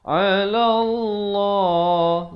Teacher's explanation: lafz jalalah dibaca tebal 2 harakat